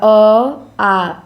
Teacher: अ आ इन दोनों स्वरों का उच्चारण कंठ से होता है। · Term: कंठ वर्ण